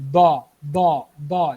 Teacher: अगर आप ज़ुबान की नोक को सामने वाले जो दांत हैं उनके साथ लगाएंगे तो वो दाल की आवाज़ दा बन जाएगी, दा दा दा। ये गलत है, ठीक है।